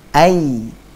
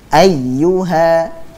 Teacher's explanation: huruf ya tersebut keluar dengan cara tengah lidah, tidak menempel pada langit-langit atas. Jadi tidak menempel, sudah pada posisi langit-langit atas, akan tetapi tidak menempel, sehingga makhrajnya pun tidak tertutup, terbuka dia.